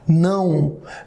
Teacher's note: Aqui não é oral, é nasal, amigo. Nasal, você fala não.